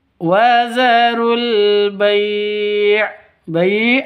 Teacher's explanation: panjang boleh dua, boleh empat, boleh enam ketukan. Karena mad lin atau mad layin